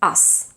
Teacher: So when you have us, it has to stay voiceless. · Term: voiceless S